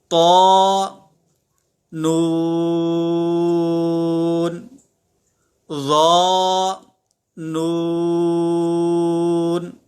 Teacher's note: طا اور ظا دونوں کو ہم نے پڑھا، یہ حروف مستعلیہ میں سے ہے، لہٰذا ہم حروف مستعلیہ کو پر یعنی موٹا پڑھیں گے